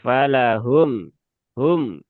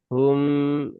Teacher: Tawasud itu dia di pertengahan antara tertahan dengan mengalir ya. Nah, jadi dia tidak tertahan, tidak mengalir atau kalau sebagian ustaz mengatakan ya mengalir sebagian atau mengalirnya sedikit.